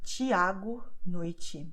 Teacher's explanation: Then you have the TI, which always will be pronounced like ch in match. The same happens with TE, but only at the end of the word.